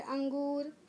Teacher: और इसे कहा गया है अनुस्वार। अनुस्वार, इसका उच्चारण जब करोगे तो इसमें आवाज़ नाक से आएगी, मुंह से नहीं।